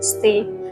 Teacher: In the original stay carries an emotional rising pitch almost like a P while pronunciation would use a former falling tone.